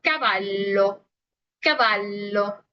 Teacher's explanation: la doble L no es más que una L normal con lo que es una pronunciación un poquito más marcada y larga